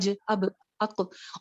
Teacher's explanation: तरह, हाँ, इसी तरह कुछ लेटर्स ऐसे हैं, कौफ, तौ, बा, जीम, दाल, जी ये 5 हरूफ ऐसे हैं कि जिनको जब हम पढ़ते हैं और इनके ऊपर जब साकिन होता है, स्पेशली जब साकिन होता है, तो तब इनकी आवाज बाउंस बैक कर जाती है। जैसे अक्को, अक्को, अक्को, जी अद, जी अब, अद, बस इस तरह पढ़ना है कि बाउंस बैक कर देना है, अद, ठीक है।